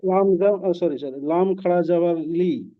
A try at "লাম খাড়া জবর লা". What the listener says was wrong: লাম খাড়া জবর লি কি করে হয়? লাম খাড়া জের লি হয়।